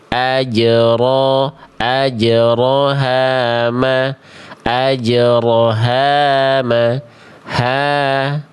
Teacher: H-nya vokal A ketemu sama alif, jadinya 2 harokat. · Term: matobi'i